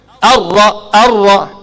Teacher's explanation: Sifat berulang-ulang. Hujung lidah tu dia bersentuh kepada makhraj, dia berulang 2 ke 3 kali. Ar-Ra. Ra tebal pasal dia bagi fathah. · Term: takrir